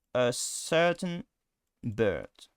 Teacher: So it's a vowel which is at the center of everything. It's a vowel which is neither high or low, neither front or back. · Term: schwa